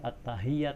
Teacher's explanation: At-tahiyyat, hak itu di tenggorokan paling atas